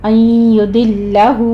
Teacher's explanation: لام کے اوپر صرف تشدید ادا کرنی ہے، لام کو آپ نے موٹا نہیں کرنا۔